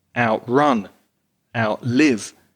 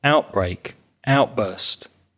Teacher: the verbs stress the second syllable